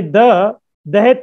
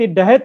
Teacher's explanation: तंतस्थ स्पर्शों की जगह कभी कभी मूर्धन्य स्पर्श हो जाता है। जो दंत स्पर्श है ना, द द, तो उसके मूर्धन्य हो जाता है